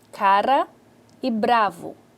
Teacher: um exemplo da tep ou vibrante simples nesse modo de articulação a língua toca rapidamente alvéolo e isso gera uma rápida obstrução da passagem de ar